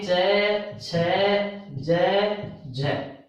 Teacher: स्पर्श संघर्षी, स्पर्श संघर्षी आपके च, छ, ज, झ, 4 है